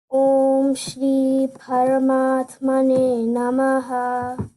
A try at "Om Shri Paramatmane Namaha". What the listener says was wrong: You have to pronounce the ra, full ra, not r. Paramatmane, ra.